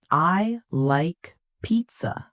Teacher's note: Voice falls on pizza. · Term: falling intonation